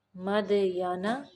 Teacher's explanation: وَإِلَى مَدْيَنَ، دال کو قلقلہ کریں گے